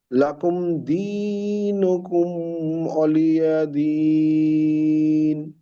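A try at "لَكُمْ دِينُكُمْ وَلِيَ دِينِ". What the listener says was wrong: দিনুকুম বলে এখানে থামা যাবে না, জলদি পড়তে হবে। লাকুম দিনুকুম ওয়ালিয়াদিন।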